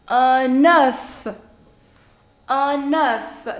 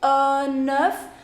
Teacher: that's enough enough now why did i say uh nerf because here it is ending with a consonant and the next is a vowel so you do liaison you actually combine the sound of these two